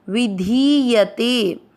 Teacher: वी मात्रा छोटी है और धी की मात्रा बड़ी है